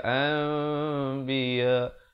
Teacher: Bibir itu seakan hampir bersentuhan saja, 2 harakat. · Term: iqlab